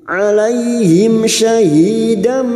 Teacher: Wa kuntu alaihim fathah bertemu ya sukun kita lunakkan alaihim. Mim sukun bertemu shin idhar safawi mim sukun dibaca jelas tanpa mendengung.